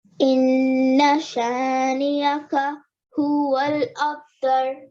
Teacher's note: You have to hold on that and make a nasal sound for 2 seconds on the noon. You don't elongate afterwards with the fatha, but you hold on the noon. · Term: noon gunna